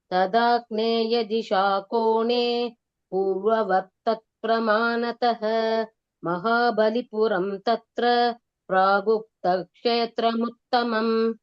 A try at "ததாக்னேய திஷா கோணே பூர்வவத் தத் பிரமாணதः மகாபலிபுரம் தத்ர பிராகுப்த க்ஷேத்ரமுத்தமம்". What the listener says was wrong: S, beautiful.